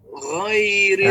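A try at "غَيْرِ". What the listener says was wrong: Nah, gho tebal Pak. Gho.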